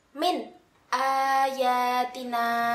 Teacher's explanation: di sini ada nun sukun bertemu dengan huruf hamzah atau Alif maka harus dibaca jelas dan tidak ada dengungan